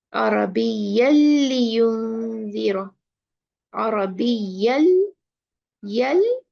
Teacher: Where is the noon gone from tanween? Completely merged with the lam.